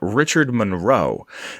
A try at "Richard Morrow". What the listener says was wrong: Morrow. That's Morrow. Yeah, it sounded like you said Monroe.